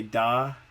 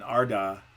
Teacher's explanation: Even when you're just saying da, there's a little bit of shifting around. But when you say r in front of the da, it moves it back reliably. I mean, our da is not going to come out the same every time, but we do know that r is going to push the da back. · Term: coarticulation